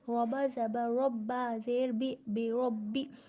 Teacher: را، با دونوں ہونٹوں کی گیلی حصے سے ادا ہوتا ہے، با پر تشدید ہے 2 مرتبہ پڑھیں گے، ایک بار پچھلے والے حروف سے اور ایک بار خود ہی سے